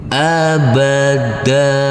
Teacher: tanwinnya dihilangkan menjadi panjang dengan panjang dengan dua harakat menjadi sini abada Saya ulangi abada tanwinnya dihilangkan dan berubah menjadi